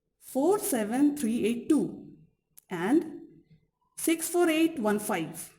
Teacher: The example that Crystal gives to illustrate this function of intonation is how a sequence of 10 digits like 4, 7, 3, 8, 2, 6, 4, 8, 1, 5 can be divided into two memorizable intonation units. First, 4, 7, 3, 8, 2 and 6, 4, 8, 1, 5.